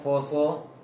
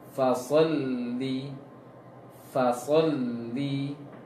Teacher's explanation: Sod tebal. Huruf sebelumnya tidak, huruf setelahnya juga tidak. Maka baca faso. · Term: huruf sod